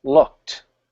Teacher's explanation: looked has a t sound now the way I'm saying it it's very sharp you can hear it clearly